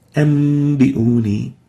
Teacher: We replace the nun sakinah here with a meme, and we maintain the ghunna, ambiuni. The reason for that is that the meme, the letter meme, is a middle letter between ba and nun.